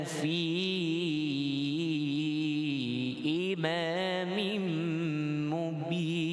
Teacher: Wajib pada bacaan fi dipanjangkan, 5 harakat. Boleh baca 4.